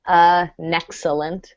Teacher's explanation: notice that with an the N sounds like it's going in front of the next vowel